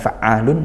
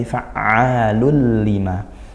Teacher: Idgham bila gunnah. Masuk tanpa dengung.